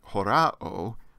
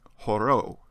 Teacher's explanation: the long Omega overpowers the short alpha and absorbs it